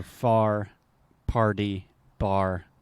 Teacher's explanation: in most accents in the u.s. we have a pretty strong R sound